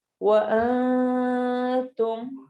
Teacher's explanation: نون کو ہم نے چھپا کے پڑھنا ہے، نون کی آواز کلیئر نہیں ہوگی